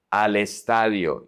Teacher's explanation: you connect al, the L connects to the E.